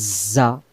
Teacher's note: যা অক্ষরটা আমাদের শীষ দিয়ে পড়তে হবে অর্থাৎ সামনে নিচের দাঁতের আগা থেকে